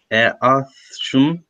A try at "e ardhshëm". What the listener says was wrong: Ardhshëm, shumë mirë. Or e ardhshme.